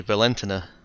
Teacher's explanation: you generally stress the second syllable of the name